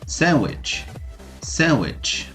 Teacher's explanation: Podem perceber que o D compõe a palavra, porém não é pronunciado. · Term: silent letter